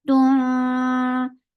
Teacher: This is Ikhfa and light Ikhfa, so keep your tongue straight.